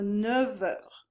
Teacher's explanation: the letter F, it is pronounced at the end of words normally, but when it's followed by a vowel, then it transforms into the V sound